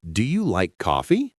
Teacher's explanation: That is a yes no question. So the intonation should go up. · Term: Rising